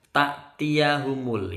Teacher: Ta'tiyahumul, ini ada hamzah sukun. Jangan ditekan seperti ain, cukup di hamzah saja, tak di ujung.